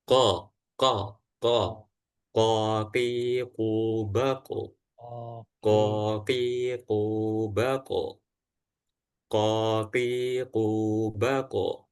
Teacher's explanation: huruf qof yang dilafalkan dengan cara menempelkan bagian belakang lidah yang menempel langit-langit atas bagian belakang